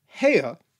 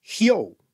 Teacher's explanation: the diphthong altered, with the first part of the sound becoming shorter, so from hea to hyo.